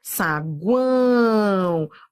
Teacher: Ele será o encontro de uma semivogal com uma vogal e uma semivogal na mesma sílaba. Saguão, ó, semivogal, vogal, semivogal. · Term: tritongo